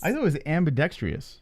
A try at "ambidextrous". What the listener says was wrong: No, there's no E or I. It's ambidextrous.